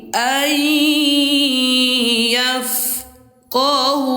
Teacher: Suara nun sukun ini kita masukkan ke huruf ya lalu disertai dengan dengung dua dua harakat atau dua ketukan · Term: idgham bighunah